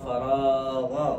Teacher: را کو تھوڑا پر کر پڑھو